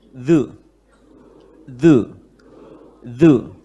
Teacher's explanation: lidah yang depan sedikit saja ini gigit sedikit oleh gigi serinya